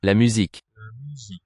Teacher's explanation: single U in French most of the time is an U, front rounded vowel